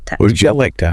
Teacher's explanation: And the second part >> that's like and to the K sound at the end of like flows directly into the T sound of to and the vowel in to gets reduced. It's not a strong two sound. It's a soft T. Like >> would you like to?